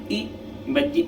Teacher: वह स्वर जिन्हें बोलने पर जीभ के अगले भाग का प्रयोग होता है। मतलब देखिए आप, जब हम ये मात्राएं पढ़ेंगे तो जीभ के अगले भाग का हमारा प्रयोग होगा, जीभ आगे हिलेगी इस तरीके, ई जीभ के अगले भाग से ही बोले जाएंगे, तो इन्हें क्या कहते हैं, अग्रस्वर।